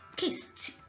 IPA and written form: kɪst (kissed)